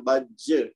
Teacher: इसको बज नहीं कहना हमने, चूंकि आखिर में जीम साकन है और ये कलकला कुबरा करना है, तो इसको जरा ज्यादा झटके के साथ पढ़ना है